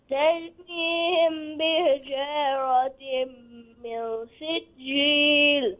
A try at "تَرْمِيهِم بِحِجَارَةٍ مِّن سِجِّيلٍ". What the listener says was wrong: ترميهم. ترميهم ميم ساكن أنا.